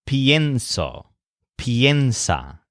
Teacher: an extra I vowel has been added to the stressed syllable of some of the conjugations. This is because Spanish speakers don't like stressing e all by itself in a verb, like penso. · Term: stressed ie